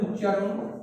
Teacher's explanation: পরের যে ব্যঞ্জনটি রয়েছে চ, তার প্রভাবে খণ্ডত তার সমান ধ্বনি অর্থাৎ চয় পরিণত হয়েছে। এটাকে বলা হয় পরাগত ব্যঞ্জন সঙ্গতি বা পরাগত সমীভবন বা পরাগত সমীকরণ।